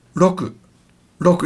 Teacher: It's almost like the beginning of a rolling R, but it's not roku.